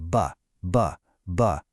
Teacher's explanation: Now say buh, buh, buh. Feel that buzz? That vibration? That's a voiced consonant.